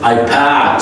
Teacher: So you put the final D as a T sound in your communication. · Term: soft T